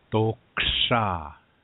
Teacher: what we want is a sound between to and do, and that in-between sound is to.